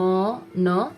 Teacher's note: nasal में of course जिसमें आपका नाक से साउंड आ रहा है और आपका जो एयर स्ट्रीम है वो आपका नोज की तरफ डाइवर्ट हो जाता है